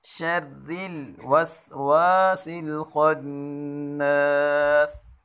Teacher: اس را کو باریک پڑھیں گے، شرل وسواس الخناس۔